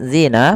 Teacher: pada lafal zina panjangnya kita panjangkan dua harakat